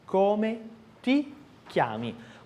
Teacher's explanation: Na verdade, é um T seco.